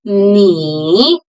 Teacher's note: Ni is pronounced with third tone. low and then rising.